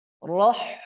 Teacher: Jangan sampai kita terlalu kuat karena huruf ha ini sifatnya rokhawah sehingga bunyinya roh.